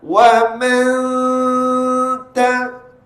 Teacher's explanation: Kalau huruf tu bersifat lemah, contohnya bertemu dengan huruf ta, wa man ta, bunyi rendah dan tipis. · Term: gunnah